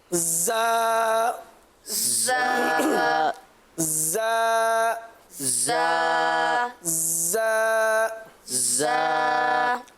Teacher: زا دونوں دانتوں کے اندرونی کنارے اور زبان کی نوک، زبان کی نوک جو ہے وہ دونوں دانتوں کے اندرونی کنارے پر لگے گی، صحیح ہے، اور ہلکی سی سیٹی کی سی آواز بھی آئے گی · آپ نے دیکھا کہ زا پڑھتے وقت سیٹی کی آواز محسوس ہو رہی ہے، اور یہ آنی بھی چاہیے۔ اگر سیٹی کی آواز نہیں آئے گی تو زا صحیح معنوں میں ادا نہیں ہو سکے گا.